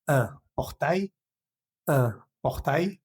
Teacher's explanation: Esa L no se pronuncia.